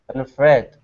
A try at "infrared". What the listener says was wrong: Yeah, that's actually much better.